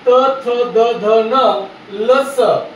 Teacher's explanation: त, थ, द, ध, न, ल, स असं म्हणत असताना तुझा जिभेचा शेंडा दाताच्या मागच्या बाजूस जाऊन चिटकायला आहे, म्हणून त्याला म्हणतात मित्रांनो दंत्य वर्ण म्हणतात।